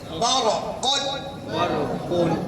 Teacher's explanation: आएंगे आपको ठीक है ना बरकुन बरकुन बड़ी काफ है ना मखरज क्या है बड़ी काफ का जुबान का आखिरी हिस्सा जुबान की जड़ ऊपर के तालु में